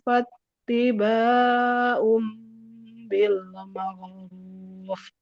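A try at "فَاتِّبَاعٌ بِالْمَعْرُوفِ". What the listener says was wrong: Ini jangan syaiun tapi syaiu. Huruf syin tengah lidah ke langit-langit atas.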